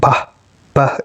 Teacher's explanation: Bah is a voiced bilabial plosive